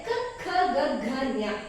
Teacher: ಗಂಟಲಿನ ಸಹಾಯದಿಂದ ಮಾತ್ರ ನಾವು ಉಚ್ಚಾರ ಮಾಡೋದಕ್ಕಾಗುತ್ತೆ. ಕ ಖ ಗ ಘ ಜ್ಞ ಅಂದ್ರೆ ಗಂಟಲಿನ ಸೌಂಡ್ ಬರುತ್ತೆ. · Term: ಕಂಠಿ ಅಕ್ಷರ